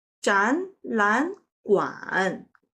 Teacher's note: In this case, 展 changed to the second tone because it encountered 懒. And then 懒 also changed to the second tone because it encounters 馆.